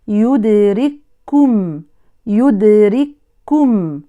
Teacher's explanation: أدغمت الكاف الساكنة الأولى في الكاف الثانية المضمومة، لذلك نرى الكاف الأولى مجردة من رمز السكون والثانية مشددة، هذا دليل الإدغام الكامل، فتقرأ بكاف واحدة مشددة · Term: إدغام متماثلين صغير